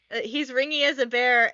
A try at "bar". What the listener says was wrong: Not bear. Not bear. It's specifically not bear. It's bar.